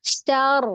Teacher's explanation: Ketika sukun di huruf ro-nya, mulutnya tidak maju. Syar, ro-nya aja, lidahnya aja, bibirnya jangan bergerak.